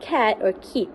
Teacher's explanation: the back of the tongue makes contact with the Vellum momentarily blocking the F flow and then it releases it suddenly So